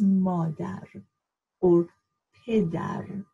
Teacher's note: the d really is the th that you have in english